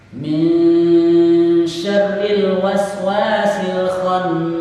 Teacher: ada nun gunnah yang dibaca dengung dua ketukan di bagian akhir.